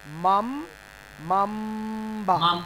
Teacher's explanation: নুনের উচ্চারণটি থাকবে না নুনের উচ্চারণটি মিম দ্বারা পরিবর্তন হয়ে যাবে